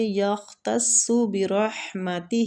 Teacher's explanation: ہے صاد بھی مستعلیہ حروف ہے، دونوں کو پور پڑیں گے، برحمتہ ہا وسط الحلق سے ادا کریں گے